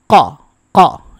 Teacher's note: কফের মাখরাজ হচ্ছে জিহ্বার গোড়া তার বরাবর উপরের তালুর সাথে লাগাতে হবে বুঝতেই পারতেছেন জিহ্বার গোড়া কিন্তু মুখের সামনের দিকে না ভিতরের দিকে